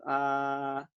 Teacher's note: Não é aquele A bem, não é aquele A bem A, tá? É aquele A mais quase fechado.